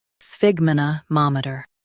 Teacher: Stress ma and keep ter light.